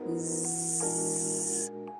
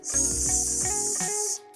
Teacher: Tapi yang satu pakai bumbu getaran pita suara atau disebutnya voiced, dan satu enggak atau voiceless.